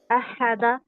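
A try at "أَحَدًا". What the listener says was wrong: احد کیوں؟ احدن، احا نہیں، احا یہ ایسا لگ رہا ہے جیسے ہا پر ہم نے زور دے دیا اور تشدید لے آئے، بنا دیا. نہیں، آہا آہا احدن احدا. ابھی بھی احا ہو رہا ہے. احا کیوں ہو رہا ہے؟ آ الگ ہے، ہا الگ ہے.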